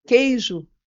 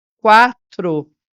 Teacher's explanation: na palavra queijo eu não ouço u Então eu tenho um dígrafo agora se eu tiver a palavra quatro vocês podem perceber que quatro eu tenho o som do U